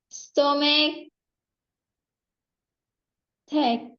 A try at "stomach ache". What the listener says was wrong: Stomach ache. Stomach ache. Dia tuh kayak ada spasi di sini loh. tulisannya nggak ada spasinya ya. Stomach ache.